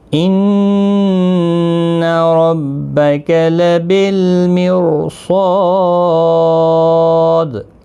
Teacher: را ساکن سے پہلے زیر ہے لیکن یہ باریک نہیں پڑا جائے گا